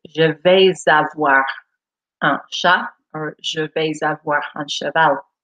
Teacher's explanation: And as you notice here, I haven't said je vais avoir. I have made a liaison, as they call it in French, between the S and the A.